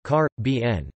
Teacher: stress on the second syllable is the most common pronunciation in the Caribbean itself, but according to the Dictionary of Caribbean English Usage, the most common pronunciation in Caribbean English is in fact on the first syllable